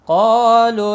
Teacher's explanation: قاف مستعلیہ ہے اس لیے پر پڑھا جائے گا، اس کے ساتھ میں الف بھی ہے یہ بھی پر پڑھا جائے گا، مستعلیہ کی وجہ سے الف موٹا پڑھا جائے گا